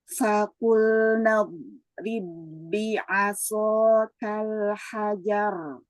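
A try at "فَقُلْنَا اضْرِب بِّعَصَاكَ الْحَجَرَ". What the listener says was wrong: Naik sedikit untuk huruf shad.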